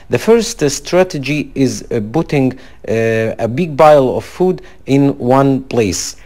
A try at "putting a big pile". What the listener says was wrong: It's putting a big pile. So you're trying to be more conscious of the bilabial consonants. You're trying to pronounce them, but you're still not getting that exactly. So you need to work a little bit more on that pudding, piles, and so on.